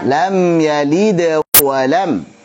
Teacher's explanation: suara qalqalah sughra tidak boleh putus